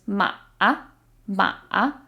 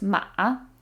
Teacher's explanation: There's a dip in the middle because it's third tone in Chinese